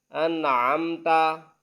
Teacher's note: ان پر غنہ نہیں کریں گے کیونکہ اس کے بعد حروف حلقی یعنی عین ہے